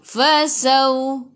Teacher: waw ada sukun sebelum waw, baris atas bacaan lin, bacaannya lembut. Fasawfa ya.